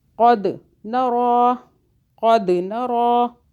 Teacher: دال پہ قلقلہ کیا، قلقلہ کا حرف ہے دال